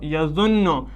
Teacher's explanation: نون پر تشدید ہے، اب ہم نے نون کو 2 بار پڑھا ، پہلی بار پڑھا ضا کے ساتھ یا زبر یا، ضا